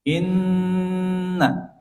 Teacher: Kemudian pada ayat keetujuh dimulai dengan nun yang bertasydid. Inna setiap ada nun bertasydid di situ ada ghunah. Ada sifat ghunah yang sempurna sehingga didengungkan